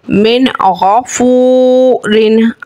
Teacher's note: अब यहाँ पे वाव साकिन से पहले पेश है, वाव मद्दा है, एक अलिफ खींचेंगे और नून साकिन के बाद गौइन हुर्फ़े हल्की का है, इज़हार का कायदा है, गुन्ना नहीं करेंगे।